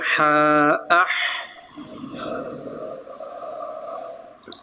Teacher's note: صفت ہم سے آواز جاری رہے گی